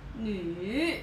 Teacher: Chú ý âm này chúng ta phải tròn hết môi ở giữa từ đầu đến cuối phát âm